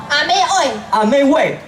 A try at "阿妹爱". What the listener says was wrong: 阿 妹 爱 不 是 味 哦 。 味 是 阿 妹 味 ， 阿 妹 是 那 个 妈 妈 的 意 思 。